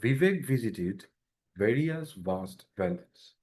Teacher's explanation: উপরের দাঁতের সাথে নিচের ঠোঁটের একটা হালকা মানে লাগানো থাকবে, কিন্তু বাতাসটা বেরিয়ে যাবে